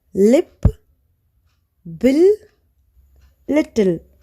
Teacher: Lateral మనకి ఒకే ఒక్క sound ఉంది, దట్ ఈస్ ల. ఈ లేటరల్ని ప్రొనౌన్స్ చేసేటప్పుడు ఎయిర్ అనేది టంగ్స్ పక్కల నుంచి బయటికి రిలీజ్ అవుతుంది.